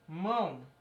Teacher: no caso mão é um ditongo nasal decrescente